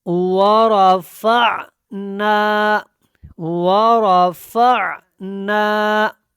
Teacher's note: فا اور عین کو جب ملانا ہے عین کی حلق سے آواز آئے گی